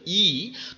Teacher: এবার যখন ই উচ্চারণ করছি লক্ষ্য করে দেখো তুমি যখন বলছ ই তখন জিউভা একটু বেঁকে উপরের দিকে উঠে যায় এবং জিউভার একটা অংশ তালুকে খানিকটা স্পর্শ করার চেষ্টা করে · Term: তালব্যস্বর, তালব্য স্বর